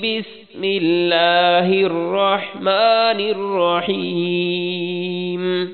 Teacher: بسم اللہ میں بسم اللہ کی لفظ اللہ کی لام باریک پڑھنی ہے